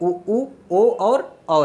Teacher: ऐसे स्वर जिनके उच्चारण में ओठ हमारा गोलाकार हो जाता है उन्हें हम लोग क्या कहते हैं? वृत्तमुखी कहते हैं।